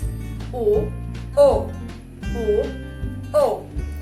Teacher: Do you hear that O is very, very close to U? · the sound of this Korean vowel is not as pressurized as the English O.